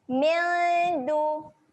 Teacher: dengung nak sedia sebut huruf dal. Jadi waktu dengung kita kena naikkan lidah. Sedia nak pergi huruf dal.